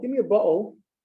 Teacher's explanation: The T's are totally gone. That's a glottal stuff.